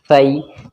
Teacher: زبان کی جو ہماری نوک ہے، سامنے کے جو اوپر والے دانت ہیں ان کے نیچے لگاؤ تو سا نکل جائے گا